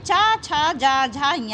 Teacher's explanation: च वर्ग जिसका उच्चारण स्थान ताल है और इसमें च छ ज झ ञ आते हैं